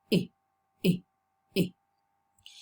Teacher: It's not tense. So it's a half close, front, loosely spread vowel. It's short and lax. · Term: kit